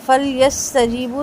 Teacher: سین کی سیٹی واضح، اور جیم اور با دونوں 2 حرکت لمبے۔ لی، یہ بھی 2 حرکت لمبا۔